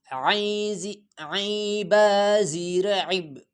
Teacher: عین گلے پہ زور لگا کے عین ادا ہو جاتا ہے